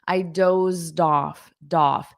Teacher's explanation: you hear a little bit of the D sound in front of off to connect those together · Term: connected speech